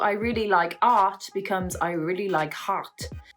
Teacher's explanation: When you say the word heart, French speakers, they don't always pronounce the H, so it becomes art. Similarly, they seem to add a H when there isn't one · they seem to add h when there isn't one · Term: adding H